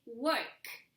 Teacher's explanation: The final sound, k, doesn't make a vibration on your throat.